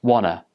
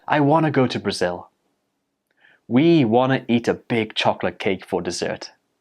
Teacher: the t sound at the end of want gets dropped and it becomes wanna